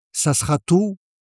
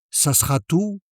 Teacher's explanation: Is that all for you? In fast-spoken French, you'll hear it as ça sera tout. The E in sera almost disappears.